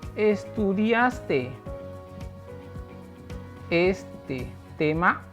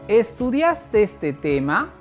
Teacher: Esta inflexión de voz puede ser de forma ascendente hacia arriba al terminar una expresión, una palabra, o descendente hacia abajo en la expresión de otras palabras. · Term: entonación ascendente